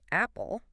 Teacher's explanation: Mouth feels kind of open. Yeah, jaw drops a bit, mouth is fairly open, and your tongue is pretty low and flat in your mouth. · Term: cat vowel